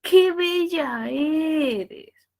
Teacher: Baja porque el pronombre exclamativo Siempre estará en el punto más alto y luego decae